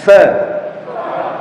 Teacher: Suaranya tidak jelas ya, artinya samar. Kemudian tidak ada getaran atau tekanan. Kemudian banyak udara yang ngalir. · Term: sifat hams